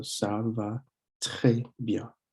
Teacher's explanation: It's a it's kind of a little sound in the back of your throat where you push your tongue, the back of your tongue. You want to push the back of your tongue or close your throat a little bit so that it just lets air through and it comes out. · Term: the French R